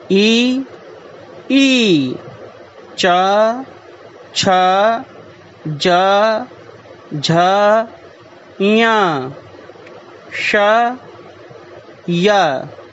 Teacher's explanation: एतेषां वर्णानाम् उच्चारणं तालु इति स्थानात् भवति। अस्मात् एते तालव्यवर्णाः कथ्यन्ते।